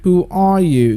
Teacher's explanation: you rise up the second word after the WH · I use the rising tone after the who because that's the second word after the WH. So you use a high pitch there.